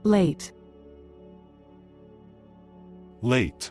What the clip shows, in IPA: leɪt